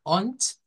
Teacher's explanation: que se pronuncia como ont, vea, ont, en vez de la D suena una T